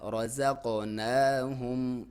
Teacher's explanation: نون کے اوپر کھڑی زبر ہے تو اس کو پڑھیں گے ایک الف کے برابر لمبائی کے ساتھ